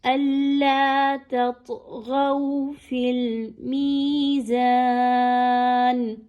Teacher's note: اب یہاں پہ تا اور طا دونوں ایک ساتھ آ گئے ہیں، دونوں کے مخارج بہت بہت قریب قریب ہیں، تو خاص توجہ دینی ہے کہ تا باریک ہی رہے اور طا موٹی کر کے پڑھی جائے. اور چونکہ طا حروف قلقلہ کا بھی حرف ہے، اس وجہ سے اس کی آواز کو باؤنس بیک کر کے پڑھیے، تھوڑا سا ہلائیے.